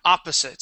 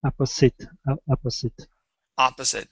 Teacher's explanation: So stress is at the very beginning of the word.